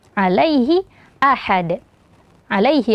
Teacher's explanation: Ya Sukun sebelumnya huruf berharakat fathah maka dibaca Lin